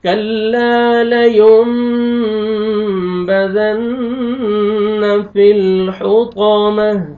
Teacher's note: غنہ کرنا ہے حوطا طا کو موٹا کر کے پڑھنا ہے تا کو وقف کی صورت میں ہاں میں چینج کرنا ہے